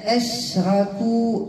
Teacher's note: نعطي الهمزة مرققة والشين فتفشي بدون قلقلة